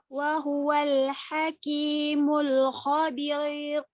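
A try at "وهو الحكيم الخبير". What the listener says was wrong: Tebal tipis itu khabir. Bukan tebal tipis. Pilih tebal atau tipis. Tipis ya. Khabir. Nah, ini mengikuti hukum ra sukun. Lihat harokat sebelumnya. Kasrah, dhammah, atau fathah kalau kasrah tipis. Kalau fathah, dhammah jadi tebal.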